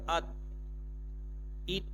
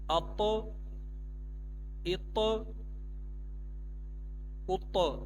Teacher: اب جو طا ہے یہ حروف قلقلہ ہے، اب اس کی آواز دوبارہ پیچھے لوٹے گی